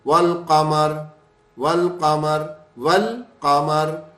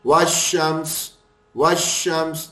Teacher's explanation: القمر تھا اس میں لام کو ہم نے پڑھا, تو یہ قمری حروف میں لام کو پڑھتے ہیں, شمسی حروف کے اندر لام کو نہیں پڑھتے